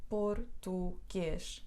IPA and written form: purtuɡeʃ (por-tu-guês)